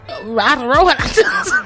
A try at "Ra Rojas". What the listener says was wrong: It's Ra Rojas. Y'all gotta roll the R.